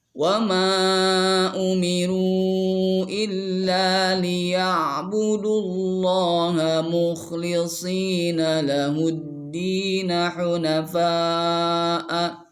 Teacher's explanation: ini mad wajib muttasil, berkumpul huruf mad alif dengan hamzah dalam satu kata